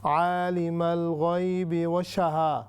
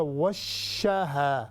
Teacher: और दूसरा था आपने पढ़ी जो तिलावत की थी, आपने पढ़ा आलिमल गैबि वशहा, ये नहीं होगा, ये होगा वशहा, यानी शीन पर शद है, उसको पूरा ज़ोर उस पर देकर फिर हमने आगे जाना है